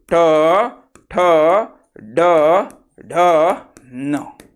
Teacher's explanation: आणि कोमल कोमल म्हणजे मृदू तालू यामधील भागाला मृधा म्हणतात आणि ज्या वर्णाचा उच्चार करताना जिभेच टोक मृधेला स्पर्श करते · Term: मूर्धन्य वर्ण